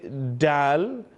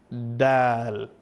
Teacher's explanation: We don't use the tip of the tongue, we use the flat part of the tongue. So don't say dal, you say dal.